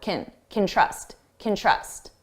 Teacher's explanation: notice you hear trust more because it's the main verb, and can, which sounds like kin, is very short